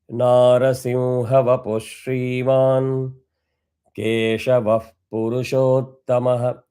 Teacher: vapuhu will become vapush because the following word is shriman